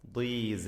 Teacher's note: സ അതും അതിൻ്റെ അലിഫും തർക്കീഖ് ചെയ്യേണ്ട അക്ഷരങ്ങളാണ്, തഫ്ഖീം അല്ല